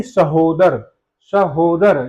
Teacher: हो पे ज्यादा बल लग रहा है